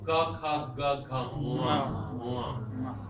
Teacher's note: This is nga in the back of the throat, where ga is.